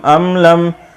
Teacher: دونوں کے میم میں اظہار شفوی ہوگا، اس لیے کہ میم ساکن کے بعد میم اور با کے علاوہ 26 حرف میں سے کوئی حرف آ جائے تو میم ساکن کا اظہار شفوی ہوتا ہے، اس لیے یہاں پر غنہ نہیں کریں گے، جلدی سے پڑھیں گے۔